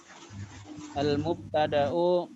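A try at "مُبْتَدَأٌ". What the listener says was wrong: Jadi antum jangan bilang al-mubtada tapi langsung mubtada'un gitu ya. Mubtada'un.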